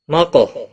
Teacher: قاف ساکن پر قلقلہ ہوگا